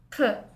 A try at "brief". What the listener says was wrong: P가 아니고 F 합쳐서 브리프 brief brief brief 적을 때 이 소리 나는 e 뒤에 이 소리 나는 e 아 이 소리 나는 i 뒤에 이 소리 나는 e 빼먹지 마